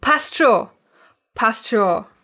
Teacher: commonly pronounced while leaving out one of the letters, namely the N in the word schon